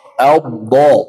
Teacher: tepi lidah bertemu dengan bagian dalam geraham atas